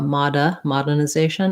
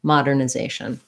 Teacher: we still have to do the r sound even though it's unstressed